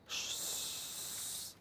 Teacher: the passage is so narrow that there is friction, and you hear that friction